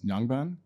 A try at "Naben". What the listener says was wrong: Naben. It's a silent G.